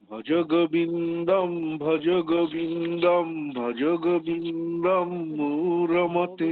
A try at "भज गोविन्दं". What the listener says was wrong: গোবিন্দম ওকারটা দীর্ঘ, ওকারটা দীর্ঘ, ভজ গোবিন্দম ওকারটা দীর্ঘ।